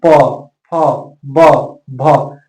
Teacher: करेंगे प फ ब भ जैसे ही प फ बोलेंगे तो आपका दोनों ओस्ट आपस में सट रहा है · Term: ओष्ठ